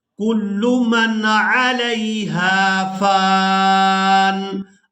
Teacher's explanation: تو آپ الف دیکھ رہے ہیں یہ الف مدہ ہے اور ہم نے فا کو الف مدہ کی وجہ سے کھینچ کر ادا کرنا ہے، اور یہاں وقف کی صورت میں نون ساکن ہو جائے گا